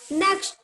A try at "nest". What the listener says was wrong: ये नेक्स्ट है. NEXT नेक्स्ट होगा. NEST क्या होगा?